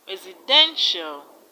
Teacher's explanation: In the word residential, the stress is on den.